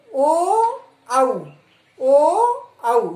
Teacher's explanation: अब है कंठोष्ठ, यानी कि कंठ और होठ दोनों, ओ औ, यानी कंठ से भी बोल रहा है और हमारे होठों की भी सहायता हो रही है।